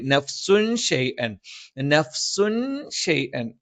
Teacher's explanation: നഫ്സുൻ തൻവീനു ശേഷം ഷ വന്നു, അത് ഇഖ്ഫ ആണ്. നമ്മൾ ആ തൻവീനിനെ ഒന്ന് അവ്യക്തമാക്കി മണിച്ചുച്ചരിക്കും. ഷൈഅൻ വല എന്നുള്ളതിന് പകരം നഫ്സുൻ ഷൈഅൻ, നഫ്സുൻ ഷൈഅൻ.